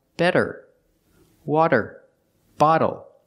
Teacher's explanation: the t is between vowels phonetically so it's a fast D